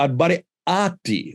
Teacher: just changed to Al-Bari'ati with a glottal stop